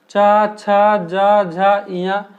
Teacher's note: इन्हें तालु से बोला जाता है